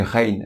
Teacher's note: Pour la lettre Rein, c'est équivalent au R français. Elle se prononce bien du fond de la gorge